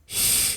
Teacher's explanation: Sifat yang dimiliki huruf shin yang pertama ialah hams. Artinya saat kita melafalkan huruf shin harus terdengar ada suara nafas, ya. Ada aliran nafas yang terdengar, ya.